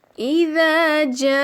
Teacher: اسی کلمے میں حمزہ آ رہا ہے تو لہٰذا اس کو کھینچ کے ادا کیا جائے گا تقریباً 4 الف کے برابر۔ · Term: مد متصل